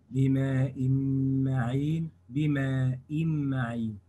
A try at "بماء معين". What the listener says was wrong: نعم، ولكن هات المد. بماء هكذا، والأداء الخطأ،